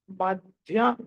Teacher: మధ్యలో ధ అన్నది మహా ప్రాణం